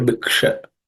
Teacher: cerebral sha, where the tip of the tongue should point to the roof of the mouth. Sha.